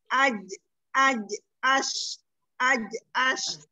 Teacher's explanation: Tengah lidahnya terangkat. Ash. Jadi bibirnya nggak usah ikut. Lidahnya saja umdi ini diangkat. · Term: Shin